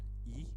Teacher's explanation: says Cardinal vowel number one e is the sound in which the raising of the tongue is as far forward as possible and as high as possible consistently with its being a vowel the lips being spread